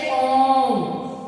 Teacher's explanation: प्लूत स्वर का चिन्ह ये होता है जैसे ओम। ओम को जब हम लंबा खींचते हैं तो उसमें प्लूत स्वर लगा हुआ होता है।